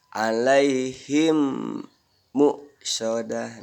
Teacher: mimnya tuh ditahan, didengungkan seperti bertasjid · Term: idgham mimi